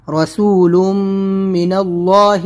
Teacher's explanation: یہاں پر میم کے اوپر تشدید ہے تو ادغام میم ہے، یہاں پر تنوین کے بعد میم تو یہاں پر غنہ کریں گے